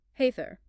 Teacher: And in words ending in R, like Heather, where a British RP defaults to a lazy schweho, the Scottish accent forcefully rejects the schwah and hits the tapped R prominently.